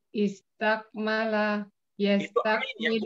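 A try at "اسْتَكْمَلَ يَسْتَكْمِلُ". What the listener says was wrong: Bukan, jangan jadi tak, jangan tak. Istak. Istak. Usahakan karena ini berbeda, jadi usahakan Ibu bacanya beda juga.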